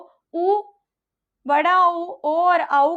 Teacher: जब हम उ, बड़ा उ, ओ और आउ का उच्चारण करते हैं तो पूर्ण रूप से हमारे होठों का जो आकार होता है वो बाहरी तरफ दिखाई देता है, जो वृत्ताकार कहलाता है।